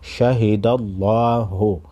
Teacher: लफ्ज़ अल्लाह के लाम को मोटा पढ़ेंगे